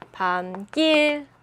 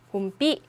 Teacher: 합성어가 될 때 뒤의 예사소리가 된소리로 변하는 현상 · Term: 사이소리 현상